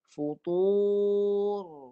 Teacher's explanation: Ra mati futur. Ra matikan dengan ra, dengan getaran hujung belakang lidah.